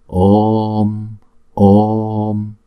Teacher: đọc chữ O hai nhịp trước, kéo dài chữ O, xong rồi chúng ta đóng chữ O lại